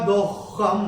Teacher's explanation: ख के ऊपर ये जो अनुस्वार आ रहा है तीसरे चरण की समाप्ति पे, वो अनुस्वार चरण की समाप्ति पे आ रहा है तो उसका उच्चारण केवल और केवल म ही होगा।